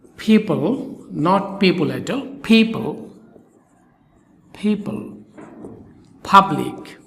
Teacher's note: সকল পি এর উচ্চারণ অষ্ঠ ধ্বনি হবে অর্থাৎ ফি এর মতন ফ এর শিকারী ফি এর মতন করতে হবে এবং দুই ঠোঁট